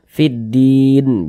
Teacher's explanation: huruf lamnya dia tidak ada tanda bacanya jadi langsung masuk ke huruf yang setelahnya ini langsung masuk ke huruf Dal ini jadi dari V langsung · maka hukumnya adalah alif lam syamsiyah sehingga huruf lamnya ini dia dibaca idgham jadi di sini kan huruf lamnya dia tidak ada tanda bacanya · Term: Idgham Syamsiyah